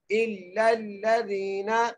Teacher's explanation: دال کو ایک الف کی مقدار کھینچ کے پڑھیں گے، نون کو بغیر کھینچے پڑھیں گے